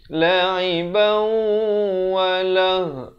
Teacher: makhrajnya ha di pangkal kerongkong · Asalnya la'iban, tapi bila datang waw masuk beserta dengung. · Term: idgham bi gunnah